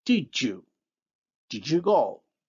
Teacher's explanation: the voiced alveolar stop d becomes the voiced palatal alveolar affricate j